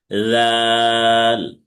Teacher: এই তিনটার মাখরাজ একই। তাহলে জাল হচ্ছে জিব্বার আগা সামনের উপরে দুই দাঁতের আগার সাথে লাগবে, তিন আলিফ টেনে পড়তে হবে।